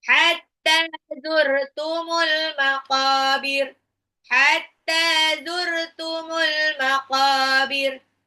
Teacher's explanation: Ya, hatta taknya matabi'i dua harokat, al maqabir alif lam komaria, alif lamnya dibaca, qafnya matabi'i dua harokat